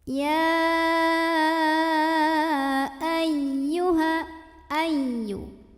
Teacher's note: Lebih detailnya ini adalah mad jaiz munfasil hukmi. Bacanya panjang 4 atau 5 harokat.